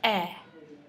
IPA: ɛ